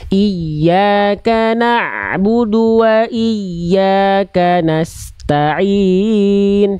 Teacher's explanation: ain sukunya jangan terbawa bu-nya dulu. Na'budu, jangan sampai na'bu.